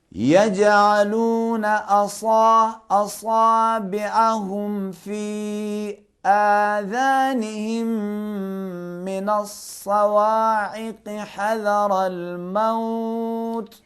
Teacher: ये हर्फ ज़ाल है, ज़ाल में ज़बान बाहर आनी चाहिए.